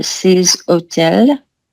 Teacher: c'est bien H muet, donc il faut une liaison.